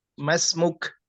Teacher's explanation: Terdengar ada hamas, ada udara yang keluar dari huruf kaf.